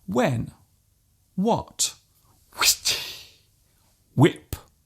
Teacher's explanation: There is actually no need to pronounce the H so strongly. Just let the sound leave your lips naturally. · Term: silent H